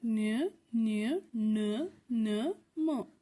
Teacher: ಮೂಗಿನ ಸಹಾಯದಿಂದ ಉಚ್ಚರಿಸುವ ಅಕ್ಷರಗಳನ್ನ ನಾವು ಅನುನಾಸಿಕ ಅಕ್ಷರಗಳು ಅಂತ ಹೇಳ್ತಿವಿ